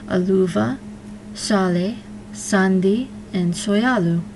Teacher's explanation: they are all stressed on the second to last syllable